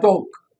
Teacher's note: जो British speakers हैं जैसे डॉग, डॉग कैसे प्रोनाउंस करेंगे, this is how they will be pronouncing it, डॉग, ओ, हल्का सा ओ का साउंड आएगा